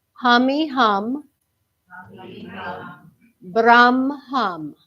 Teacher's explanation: you feel how your tongue kind of rolls a little bit on that Brum